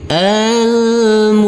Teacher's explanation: almuzzammil huruf lam berubah menjadi huruf yang lam yang ber sukun karena kita wakafkan maka kita matikan untuk huruf lamnya